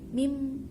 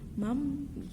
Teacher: kita menukar suara nun itu menjadi suara mim. Jadi asalnya min menjadi mim, asalnya man menjadi mam gitu. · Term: iqlab